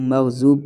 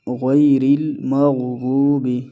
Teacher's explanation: ضاد موٹے حروف میں سے ہے، غین موٹے حروف میں سے ہے، ان دونوں کو ہم موٹا پڑھیں گے